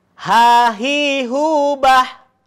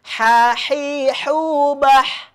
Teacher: Kalau ha itu adanya di ujung tenggorokan. Kalau ha yang seperti ini, yang seperti jim tapi tidak ada titiknya, itu di atasnya atau di tengah-tengah tenggorokan.